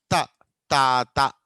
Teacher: మనం తెలుగులో తా అంటాం. తా అన్నప్పుడు నాలుక బయటికి రాదు. ఓకే, రెండు పళ్ళ వెనకాల గట్టిగా తాకుతుంది. త, తా, త. ఓకే, కానీ ఇంగ్లీష్లో తా అన్నప్పుడు నాలుక కొద్దిగా బయటికి వస్తుంది, అంటే రెండు పళ్ళకి మధ్యలో కొంత గ్యాప్ అనేది ఏర్పడుతుంది.